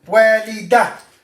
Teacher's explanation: Ta marbuta, always the letter before it comes with fatha. So most of the time we pronounce it with the fatha before it. We don't pronounce the ta marbuta.